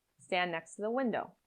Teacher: In stand next to the window, the D in stand can disappear. The T in next is linked to the T in to.